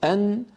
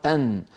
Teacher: فالمنطقة التي يقرعها عند النون أنزل قليلا من المنطقة التي عند اللام.